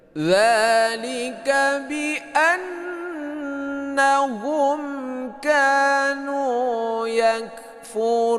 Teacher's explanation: Nah, dzalika ini baris ini mad tabi'i bi an ini gunnah ya, berdengung dua harokat. Hum mimati bertemu dengan ka, ini adalah idhar syafawi, tidak berdengung ya.